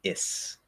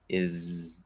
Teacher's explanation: Now, we do have partial end of word devoicing, not full end of word devoicing, partial end of word devoicing. Z is voiced, Z, S is the same sound, but voiceless. We don't vibrate the vocal cords. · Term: full Z